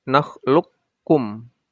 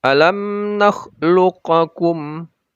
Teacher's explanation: Qafnya sukun dan itu hilang hukumnya, hukum qalqalahnya. Jadi tidak boleh kita baca alam nakhluqakum.